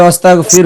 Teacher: শেষের রোয়াটা পাতলা হবে